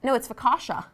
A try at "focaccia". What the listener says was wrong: No, it's focaccia. Focaccia. Focaccia. I think you're just saying S's and I'm saying a sh sound. Yeah, focaccia.